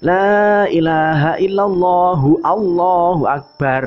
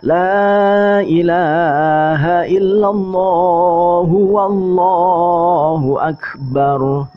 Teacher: Wawunya sering kali dihilangkan. Nah, itu tidak seperti itu ya. Wawunya jangan dihilangkan.